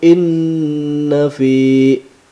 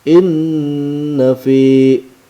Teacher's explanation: Hukum bacaannya gunnah. Alasannya nun syiddah, ada dua nun bertemu langsung.